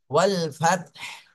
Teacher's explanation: লাস্টে শুধু গলা চেপে বাতাস বের করতে হবে